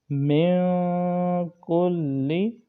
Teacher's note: نون ساکن کے بعد کاف آ رہا ہے تو اس میں غنہ کریں گے، من میں اس کو لمبا کریں گے، من کلی۔